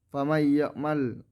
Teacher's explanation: Ayat yang ketujuh, famay ya'mal idgham bigunnah karena ada huruf nun bertemu dengan huruf ya, cara bacanya memasukkan dengan mendengungkan.